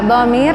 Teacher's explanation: Samarihi, ha, dhamir bertemu dengan selain hamzah dibaca 2 harokat, mad silah qasirah